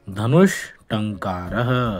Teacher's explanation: ट, ठ तथा श इन तीनों का उच्चारण स्थान मूर्धा है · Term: मूर्धन्य श